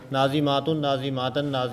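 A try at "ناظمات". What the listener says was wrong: लंबा लंबा लंबा लंबा हो गया।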